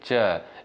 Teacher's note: मुख के द्वारा जो है कम वायु निकलती है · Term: अल्प प्राण